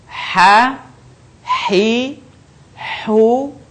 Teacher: Selanjutnya huruf H. Huruf ini dikeluarkan dari tengah tenggorokan kita. Ketika dilafalkan persis seperti kita melafalkan kata ayah, sah.